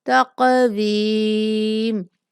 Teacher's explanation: قاف پر قلقلہ کریں گے